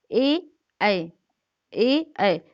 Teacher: देखिए आप जब उच्चारण स्थान करते हैं कि ए ऐ, तो आपकी जो जीवा से, आपके कंठ से भी आवाज आती है, और आपकी जो जीवा होती है वो नीचे की ओर जाती है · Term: कंठ तालव्य